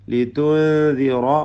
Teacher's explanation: ലിതുൻദിറ റായിന് പൂർണ്ണമായ തഫ്ഹീം കൊടുത്ത് തടിപ്പിക്കണം